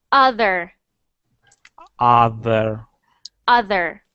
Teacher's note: in uh Canadian and uh American we normally pronounce the R